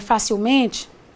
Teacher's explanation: você note que a palavra facilmente tem sílaba tônica me que não fa